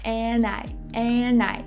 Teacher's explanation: she didn't pronounce the letter D at all we just dropped the D